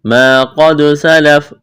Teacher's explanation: الف مدہ، قاف کو موٹا کرنا ہے، دال پر قلقلہ کریں گے، وقف کریں گے، فا کو ساکن کرنا ہے۔